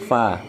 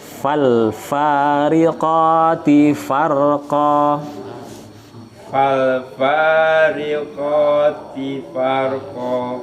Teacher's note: Fa bawah ya, bibir bawah ketemu gigi atas. Fa, bukan pa ya.